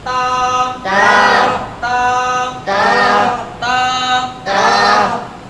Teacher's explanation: তাটা উচ্চারণ হবে জিহ্বার আগা সামনের উপরে দুই দাঁতের গোড়ার সঙ্গে লাগাইয়া। আমরা সেখানে জিহ্বাটাকে আমরা ধাক্কা দিয়ে উচ্চারণ করব, তাহলে সহি শুদ্ধভাবে উচ্চারণ হবে।